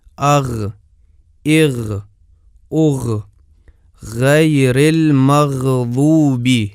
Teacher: ملاحظہ کریں کہ مخرج کھلا ہے، بند نہیں ہے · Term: غین کا مخرج